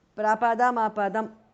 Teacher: the first word ends in m and the next starts with a, so it becomes ma, m and a joined together to form ma